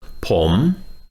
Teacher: so I being a male I'm going to say poem with a rising tone